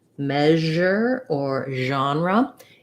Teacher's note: This zh sound, like in measure or genre, it's like the sh sound, like in she, except my voice is on.